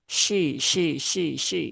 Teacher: Ho-nya ada alif maka dibaca panjang cukup 2 harokat. Kemudian huruf shin ya dia ada sifat tafashi jadi ada apa namanya udara ya udara yang keluar menyembur dari dalam mulut ya shi ya tapi itu tidak perlu sampai berlebihan menjadi shi nah, gitu.